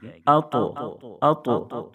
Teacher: اطعمہم، طا چونکہ حروف قلقلہ کے 5 حرفوں میں سے ہے، اس لیے طا میں قلقلہ ہوگا، یعنی آواز لوٹ جائے گی